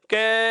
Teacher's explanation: जैसे ही आप इस कै वर्ण का उच्चारण करेंगे तो कै को जैसे ही लंबा बोलते हैं कै, अर्थात अंत में हमें ए की ध्वनि सुनाई देने लग जाती है।